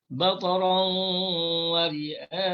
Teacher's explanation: Kalau kita nak wakaf dengan mat arid disukun, bataran wa ri'a, panjang 6 harakat.